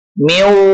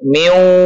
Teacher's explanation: dilebur nun sukun ke dalam huruf wawu dan menggunakan dengung miu dua ketukan